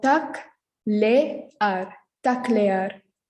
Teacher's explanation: Here we have two vowels next to each other. So we pronounce them separately.